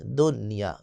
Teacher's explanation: لیکن آپ نے دنیا نہیں پڑھنا بلکہ دنیا، نون کو ظاہر کرنا ہے ایک کلمے میں